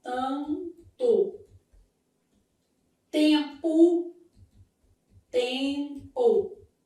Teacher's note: Mas pra gente melhorar isso aqui, ó, vamos nos lembrar de que os dígrafos eles se dividem em dois grupos. os dígrafos vocálicos formados por vogal mais m ou n, nesse caso, m ou n, sempre com a indicação de som o quê? Nasal.